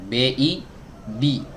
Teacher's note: Masuk ke huruf ba. Huruf ba keluar dari dua bibir, ya, dua bibir yang dirapatkan